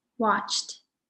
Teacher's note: Again, watched ends with a t sound, just like talked or walked.